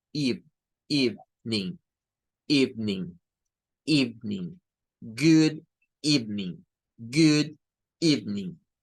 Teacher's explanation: Y no suena a Ev, suena a Eve, Eve. Es un sonido de I corta.